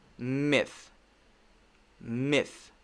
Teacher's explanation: Notice I'm not bringing my voice into the TH sound. I'm not saying myth. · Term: unvoiced sound